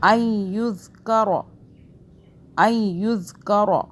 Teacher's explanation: ذال کو سافٹ پڑھیں گے، زبان کو ہلکا سا باہر کر کے